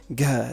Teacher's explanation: it's a g with an h sound after it